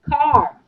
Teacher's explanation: R is at last, will always be silent.